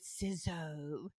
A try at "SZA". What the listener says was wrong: Yeah. SZA. You combine SZA and Lizzo. Sizzo.